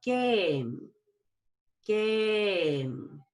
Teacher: finally today I'm going to show you game a long a you'll go up on the a and down on a short I sound